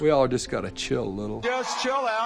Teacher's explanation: there's actually a kind of a press down quality in the larynx